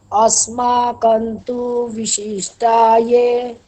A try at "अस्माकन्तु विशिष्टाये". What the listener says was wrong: হ্যাঁ, তু এটা হচ্ছে হ্রস্ব। সুতরাং अस्माकन्तु বিশিষ্টা, এখানে তু এরকম বললে হবে না। তু বি একসঙ্গে বলতে হবে। अस्माकन्तु বিশিষ্টায়ে, বলুন। अस्माकन्तु विशिष्टाये, तु विशिष्टाये, বলুন।